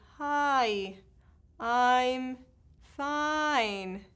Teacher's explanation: All diphthongs in English are called falling diphthongs. That means that the first sound, I, is way longer than the second sound. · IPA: aɪ